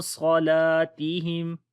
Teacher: نون کے اندر جو اخفا ہوگا وہ موٹا ہوگا، عاصا، صلاتہم، صاد کو موٹا پڑھیں گے اور لام کو لمبا کریں گے